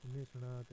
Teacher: यदि ई और उ अथवा ए स्वर उच्चारित हो तो यह स अपने वर्तस्य स्थान छोड़कर मूर्धा की ओर उच्चारित होने लगता है और मूर्धन्य स बन जाता है